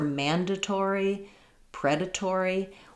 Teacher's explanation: So I'm not sure if the British has a different syllable stress, but what you're probably noticing there is that even in American English, for mandatory, predatory, we actually say the T the way the British will. So we use a true T here. It doesn't get flapped. And that's because in all of these words, predatory, there's secondary stress on the tor syllable.